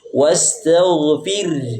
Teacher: Termasuk roh tarqiq. Ketika roh sukun yang sebelumnya kasroh.